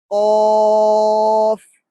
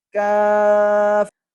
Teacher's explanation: اسی طرح قوف اور کاف، تو ان کا مخرج بھی آپ سکرین پر دیکھ لیں کہ ان کا مخرج بھی زبان کی جڑ اوپر کی طرف اٹھتی ہے، لیکن قوف کے اندر تھوڑا پیچھے سے یعنی حلق کی طرف سے، اور کاف میں تھوڑا آگے منہ کی طرف سے